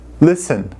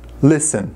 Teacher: Não pronunciamos a letra T, tá?